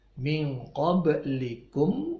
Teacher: qablikum ba-nya dipantulkan bacaan qalqalah